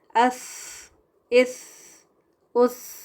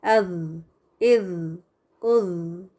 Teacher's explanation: सा में हवा का बहाव है और काफ़ी स्ट्रॉन्ग है, अस, इस, उस। लेकिन ज़ैल में हवा नहीं, आवाज़ को जारी रखना है। कैसे? अज़, इज़, उज़।